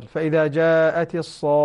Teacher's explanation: وهذا مد لازم، كلمة مثقلة لمدة 6 حركات